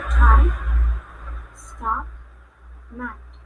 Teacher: Next is English consonant T. It belongs to alveolar and stop.